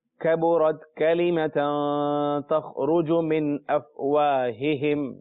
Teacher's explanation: ہا جو ہے حروف حلقی میں سے ہے مگر سینے کے قریب سے گویا کہ ادا ہوتا ہے. حلق کا وہ حصہ جو سینے کے قریب ہے.